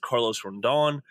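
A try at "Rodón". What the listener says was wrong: Rodon, I think is how it's pronounced. But I definitely heard an N, like a Rondon or Rondon, the first time you said it.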